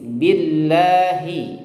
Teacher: Nah, kemudian lafaz Allah itu tipis ya, karena sebelumnya diawali atau didahului dengan huruf ba yang kasroh